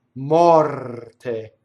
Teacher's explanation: notice it's an open O, it's a rolled R.